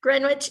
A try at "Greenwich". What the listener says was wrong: The W is silent, Greenwich.